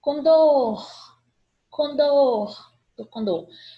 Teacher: Então, oxítonas, última sílaba tônica.